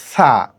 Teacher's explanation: নিয়ম হলো আমাদের জিওভার অগ্রভাগকে আমাদের উপরের উপরের যে দাঁত আছে উপরের দাঁতের সাথে লাগিয়ে আমরা উচ্চারণ করব